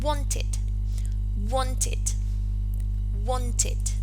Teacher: The stem in this case ends with the voiceless alveolar plosive sound t.